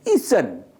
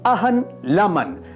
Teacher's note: In all these examples, na lonesome marks the final unreleased na sound of the syllable